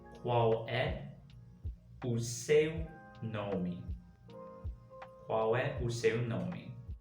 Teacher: the ending L sound actually kind of turns into a U. So we end up saying qual, qual.